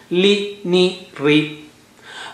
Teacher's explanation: Ri is no more thick. Only ra is thick or ru is thick. Ri is not thick.